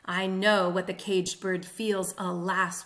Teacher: The 2 feet are iambic and anapestic, and they are used in alternating ways. So the first and last lines of the stanza are iambic and then anapestic, and then the interior lines are the opposite. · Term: tetrameter in mixed meter